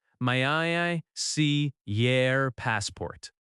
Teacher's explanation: The word your reduces to yer.